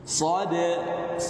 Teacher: Berarti kalau jahar, berarti dia suaranya jelas. Kemudian ada getaran di pita suara dan tertahan aliran udara.